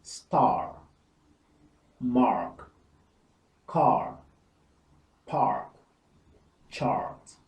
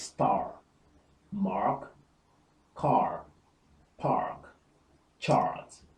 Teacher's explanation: You'll note here that the R is pronounced, unlike the British version, because the Americans pronounce the R.